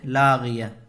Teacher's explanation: اگر گول تا پر سانس توڑیں گے تو وہ ہائے ساکنہ بن جاتی ہے